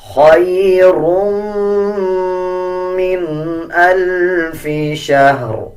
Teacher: اب را کو میم کے ساتھ ملا کے پڑھیں گے اور غنہ بھی کریں گے